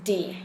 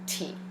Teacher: the noisy tongue Tapper D and the quiet T